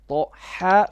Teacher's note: First ha is middle throat.